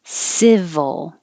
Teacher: civil the vowel is i not too high